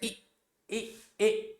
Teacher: पहला है प्रसरित। प्रसरित होता है फैला हुआ, जब हमारा जो हमारे होठ हैं वो फैल जाएंगे